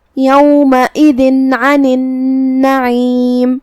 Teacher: حرف العین حروف الاظہار میں سے ہے تو ہم یہ تنوین کو ظاہر کریں گے اور بغیر غنہ کے حکم کو ادا کریں گے.